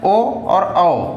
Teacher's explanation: कंठोष्ठ। इसका जो उच्चारण स्थल है कंठ और वोष्ठ से होता है, इसलिए इसको कंठोष्ठ बोला जाता है।